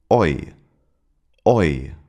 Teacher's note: The corresponding English sound can be found in the word boy. It starts with an o sound, as in not, and then glides into an e sound, as in lip. And again, the transition is very fast. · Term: oi defthong, oi diphthong